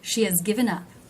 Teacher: Do you see how the word has is very low in pitch? It's actually been reduced and I've dropped the H.